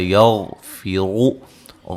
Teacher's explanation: یغفر غین کو موٹا ادا کریں گے